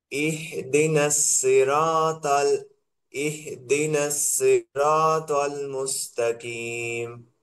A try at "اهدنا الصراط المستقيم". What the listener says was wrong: এখানে আপনার সদ সিনের মতো হয়ে যাচ্ছে, আগে সিন সদের মতো হয়ে গেছিল, আর এখানে আছে সদ হয়ে যাচ্ছে সিনের মতো। ইহদিনাস না, ইহদিনাস, ইহদিনাস সিরাতাল মুস্তাকিম।